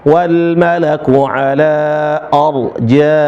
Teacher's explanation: Nah, konsisten di huruf ro ya. Rnya yang sukun jadi dia dibaca tebal